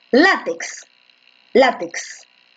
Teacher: látex está en la penúltima, ¿no? Esta es una grave, pero esta es una grave con tilde.